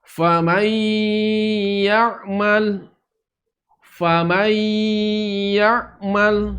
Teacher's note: Ketika nun sukun atau tanwin bertemu dengan huruf-huruf ini, maka cara bacanya dengan didengungkan, ditahan suaranya, ditahan, tidak dilangsungkan.